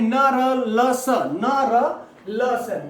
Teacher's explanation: क्यों कहते हैं, क्योंकि इनको बोलते समय जीभ जो है वो झटके के साथ लुढ़कती है, झटके के साथ, या ऐसा कहते हैं कि जरा सा दंतमूल को, जरा सा मूर्धा को स्पर्श करती है या छूती है या छूने का प्रयास करती है। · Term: वर्तस्य वर्ण